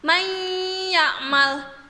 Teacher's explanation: jadi hurufnya seperti ditasydidkan dan huruf nun nya hilang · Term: Idgham Bighunnah, idgham biguna